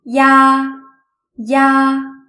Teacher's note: first pronounce the simple final e and then gradually switch to the simple final ah